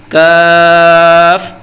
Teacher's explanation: اس کے اندر ایک باریک سی کلفی بنی ہوتی ہے، یہ قاف کی طرح موٹا نہیں ہے، اسے بالکل باریک اور سادہ پڑھنا ہے۔ زبان کی جڑ کو تالوں کے سخت حصے سے لگائیں گے اور بولیں گے کاف